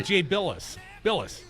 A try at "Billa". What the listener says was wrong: B-I-L-A. There's no S. Billa.